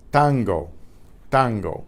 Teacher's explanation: there's no puff of air out the the tongue is right against the rear teeth the rear